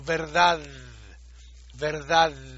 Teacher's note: una dalet sin dages es una dalet interdental suave